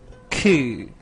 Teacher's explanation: you can hear breathy sound ku